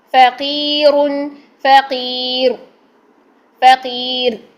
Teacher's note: را باریک ہوگا جب یہ را ساکن ماقبل کسرہ کی حالت میں ہو گیا، ٹھیک ہے. اور جب ہم اس کو پیش تنوین میں پڑھ رہے ہیں تب ہم اس کو موٹا کر رہے ہیں، لیکن جب ہم اس کو ساکن کر رہے ہیں تب ہم نے باریک کیا، اور اس کی ریزن یہ تھی کہ را ساکن ہو گیا اور اس سے پہلے کسرہ آ گئی، ٹھیک ہے.